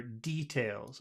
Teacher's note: I prefer details. I prefer it on the first syllable.